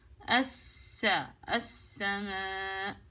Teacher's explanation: اللام شمسية، عشان هيك وضعوا لك اياها خالي من الحركة يعني ما بلفظهاش، أدخل على سين على طول مشددة